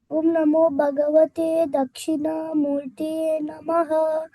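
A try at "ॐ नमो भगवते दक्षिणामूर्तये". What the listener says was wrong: Om Namo Bhagavade Dakshinamurtaye. There is no Namaha. Already we have told Om Namo. So again you need not tell Namaha. So it is only Om Namo Bhagavade Dakshinamurtaye.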